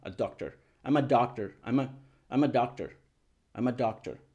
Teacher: se escucha la a casi no o sea es muy rápida es muy corta es baja